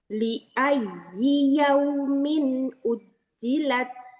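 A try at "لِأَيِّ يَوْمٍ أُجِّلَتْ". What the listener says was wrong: Taknya lebih bagus yang pertama. Hamzahnya lebih terdengar. Ujjilat.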